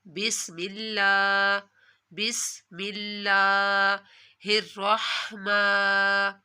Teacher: لفظ اللہ کو آپ نے ایک الف کے برابر کھینچ کر پڑھنا ہے